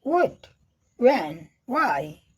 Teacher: W H वाले शब्द जैसे व्हाट व्हेन वाई में एच का उच्चारण अक्सर नहीं किया जाता है।